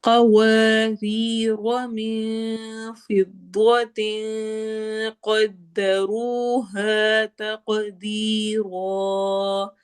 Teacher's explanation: تق قاف پہ قلقلہ ہوگا، دی یا مدہ، اور را میں ہم را کو موٹا پڑھیں گے اور الف مدہ کریں گے